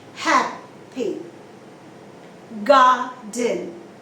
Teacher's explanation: It's an adjective. You stress on the first syllable. Happy. The second syllable is very weak and mild. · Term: first syllable stress